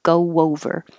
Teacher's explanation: you make your lips very small for the go, and they're already in a small position for the next O, so it makes kind of an invisible W